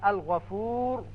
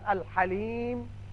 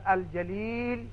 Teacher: یہ 14 حروف قمری جب آئے تو لام کو ہم نے پڑھا، یعنی لام کا اظہار کیا